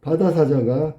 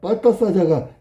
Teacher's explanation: 그러니까 바다사자가가 나중에 보니까 빠따사자가가 됐어. 그러면 된소리 되기라고. 그런데 비읍이 쌍비읍 됐다 그래서 첨가된 게 아니라 교체라고.